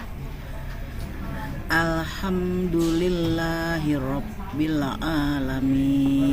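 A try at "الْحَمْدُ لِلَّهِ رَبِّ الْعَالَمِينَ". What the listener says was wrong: Ain. Maaf Ibu, ainnya kurang jelas. Rabbil alamin. Ya, kemudian berikutnya tadi domanya bibirnya harus dibonyongkan.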